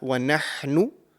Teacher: the ha from the middle part of your throat